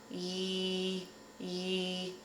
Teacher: So to make this sound, the tip of your tongue is going to stay behind your bottom front teeth, and your tongue is going to arch up in the middle, like you're about to say the vowel sound E, ye, ye.